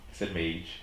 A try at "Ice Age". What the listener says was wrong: No, Age. You said Mage. You said Mage. There was an M there.